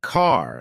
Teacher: American accent often uses a strong R sound